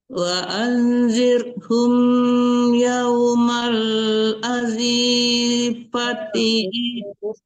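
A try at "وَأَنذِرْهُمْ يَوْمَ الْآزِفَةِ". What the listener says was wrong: Yang panjang itu A bukan Z ya. Z tidak ada tanda panjangnya.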